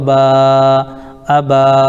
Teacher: الف سے پہلے با کے اوپر زبر ہے اس لیے الف مدہ ہوگا، ان کو تھوڑا کھینچ کر پڑھیں